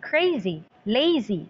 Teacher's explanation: both are stressed in the first syllable. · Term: feminine rhyme